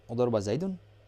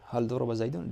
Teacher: you're also going to use a rising intonation at the end of the sentence